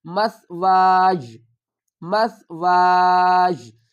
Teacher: الف کو ہم ایک الف کی مقدار کھینچ کر پڑھیں گے اور اس کے ساتھ ہی ہم یا کو ملا لیں گے